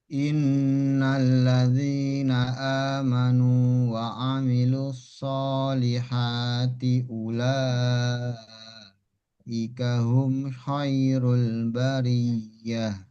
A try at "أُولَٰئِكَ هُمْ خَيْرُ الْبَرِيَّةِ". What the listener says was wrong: Ula panjangnya. Ingat 6 harokat. Ini ula.